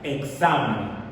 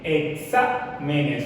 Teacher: Exámenes, bien, exámenes, fíjate que es una palabra, tiene 3 sílabas y está acentuada, la sílaba tónica está en exa y se coloca, pues es una palabra sobre esdrújula, pues que la mayor fuerza de la voz está en la antepenúltima sílaba